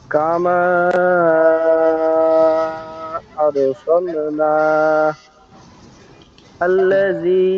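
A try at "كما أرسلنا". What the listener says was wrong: নাতে একটু টান হবে, এক আলিফ পরিমাণ।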